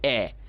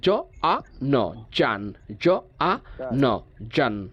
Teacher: যারা American follow করি তারা বলবো এ, ব্রিটিশ যারা ফলো করি তারা বলবো আ। তাহলে জ আ ন জান, জ আ ন জান।